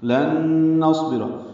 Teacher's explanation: نون ساکن کے بعد نون آیا ہے تو غنہ ہوگا